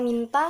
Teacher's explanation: bunyi N hidup, nasal, dan apikodental